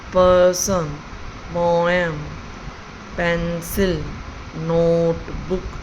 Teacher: with two syllables, they have stress on the first syllable